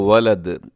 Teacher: ولدن پہ وقف تو ولد، دال قلقلہ ہوگا